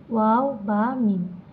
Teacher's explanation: 2 ঠোঁট থেকে উচ্চারিত হয়